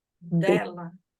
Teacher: gente usa a língua e os dentes juntos dela o d a língua vai lá no dente da frente